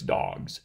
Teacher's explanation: and in our dog ends in a voiced guy and therefore the plural suffix is going to be the voiced form the z form · For dogs, g ends in, or dog ends in a voiced g, and therefore the plural suffix is going to be the voiced form, the Z form of the suffix dogs. So basically what's happening there is that the voicing specification is moving later on in time to affect the sounds that come after the root rather than before it. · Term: progressive assimilation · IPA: [dagz]